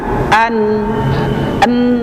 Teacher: huruf nun itu makhrajnya adalah ujung lidah. Sandarannya gusi gigi seri atas bagian dalam. Kalau kita ucapkan nun sukun dengan jelas maka bunyinya akan an n gitu ya.